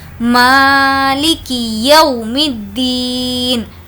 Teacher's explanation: واو جس پر جزم ہے اور اس سے پہلے زبر ہے، اس کو ہم بالکل بھی کھینچ کر نہیں پڑھیں گے، واو مدہ ہوتا تو اس کو کھینچتے، یہ واو لین ہے۔